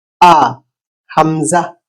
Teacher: উচ্চারণ গলার একদম গভীর গভীর থেকে একটা ঝটকা দিয়ে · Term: হামজা